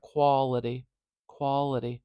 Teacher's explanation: After the ol, I hear a schwa, which is this very weak, kind of featureless vowel sound